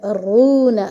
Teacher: را بھاری ہے کیونکہ اس پہ پیش ہے